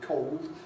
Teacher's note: the backing of [əʊ] to [ɒʊ] before dark L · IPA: [kɒʊld]